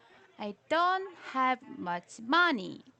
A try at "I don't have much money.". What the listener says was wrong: So don't have and then money. These are the stressed words here, but don't pause after the word don't. So no pauses. Only pause at the end of the sentence.